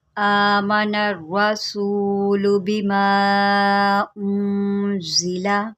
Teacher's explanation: حمزہ کے اوپر کھڑا زبر ہے، ہم اس کو ایک الف کے برابر لمبا کریں گے۔